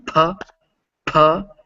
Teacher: when english speakers say it we give up a big puff of air with it